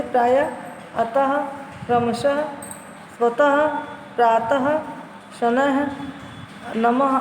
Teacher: विसर्ग, इस ध्वनि का उच्चारण आधे ह के समान होता है। यह स्वर नहीं है, लेकिन इसे अ के साथ जोड़कर अह की तरह लिखा जाता है।